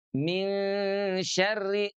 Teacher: Jadi bagaimana bunyinya min syarri nun yang asalnya ada di ujung lidah untuk bergerak ke tengah lidah karena huruf syin keluarnya dari tengah lidah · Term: ikhfa